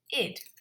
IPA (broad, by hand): ɪd